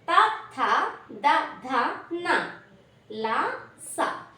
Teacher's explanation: Next దంత్యాలు దంత్యాలు అంటే దంతములు అంటే పళ్ళు అని అర్థం. ఈ దంత్యాల సహాయంతో దంతముల సహాయంతో పలకబడుతున్నాయి కాబట్టి వీటిని దంత్యాలు అని పిలుస్తాము